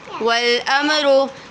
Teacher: وَالْأَمْرُ میم ساکن کے بعد را آ رہا ہے تو اظہار شفوی ہو رہا ہے